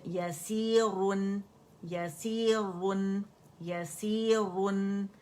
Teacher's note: यसीरुन, रा मुखफ़्फ़म पड़ी जाएगी, क्योंकि दम्मतैन है